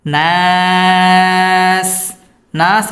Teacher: নাস এখানে 3 আলিফ টেনে পড়তে হবে মধ্যে আরজি।